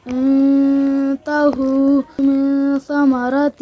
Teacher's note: په دغه نون ساکن او تنوین کې به د یو الف په مقدار غنه د اخفا کېږي